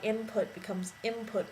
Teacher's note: That is why input becomes input when people say it. It goes from the N to the M, because it'll slide down, because the next letter, the P, is in a certain part of the mouth, and so is the M, and so it would slide over, because that just makes it easier for the tongue. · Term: consonant shift or slide